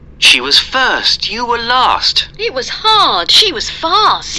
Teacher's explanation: all of these was and were that you see here, all of them, they are unstressed